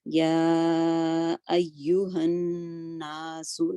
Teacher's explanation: یا ایو، یہاں پہ نبر ہوگا، ایو پہ یا پہ، ایوہن یہ اکمل غنہ ہے تو نون پہ، نون مشدد پہ اس کو ضرور 2 کاؤنٹ تک ہولڈ کرنا ہے۔ یا ایوہن ناس، نا 2 کاؤنٹ جائے گا، ہولڈ بھی 2 کاؤنٹ اور پھر اس کو اسٹریچ بھی 2 کاؤنٹ کرنا ہے کیونکہ نون اور ساتھ الف مدیہ ہے۔